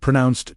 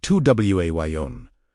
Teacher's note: pronounced Tuwayon, with emphasis on the second syllable